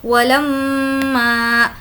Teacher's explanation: ولما، لام میم زبر لم، میم پر تشدید ہے اس لیے غنہ ہوگا۔ غنہ کا مطلب ہوتا ہے ناک میں آواز کو روکنا